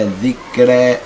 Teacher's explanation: أميل بالفتحة نحو الكسر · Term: إمالة